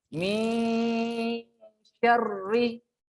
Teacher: nun sukun ketemu dengan sya itu ya hukumnya ikhfa. Dia dibaca dalam istilah bahasa Indonesianya namanya samar-samar ya. Min syarri.